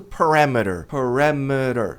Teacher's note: Parameter t ladeado por vogais. A tônica tá no RA.